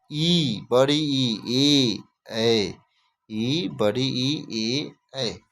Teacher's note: जिन स्वरों के उच्चारण में जीभ का अग्रभाग काम आता है उन्हें अग्रस्वर कहते हैं।